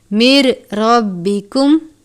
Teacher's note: سکینتم من ربکم، نون ساکن کے بعد را ہے، را مشدد ہے، حروف یرملون میں سے ادغام کا قاعدہ لگے گا لیکن لام اور را پر غنہ نہیں کرتے، تو ہم اس کو من نہیں پڑھیں گے بلکہ مر پڑھیں گے